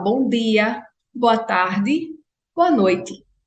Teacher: Mas as pessoas identificavam rapidamente que eu não era soteropolitana por causa da minha não palatalização do T e do D